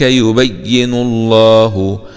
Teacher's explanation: اسم الجلالة لا يتهجى تأدبا مع تفخيم اللام لأنها جاءت بعد حرف مضموم